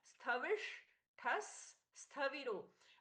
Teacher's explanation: विसर्ग का स में परिवर्तन है, बाद में भी आधा स है, तो ये दोनों आधे स एक दूसरे में मिल गए हैं, ये जुड़ गए हैं, तो एक हो गए हैं।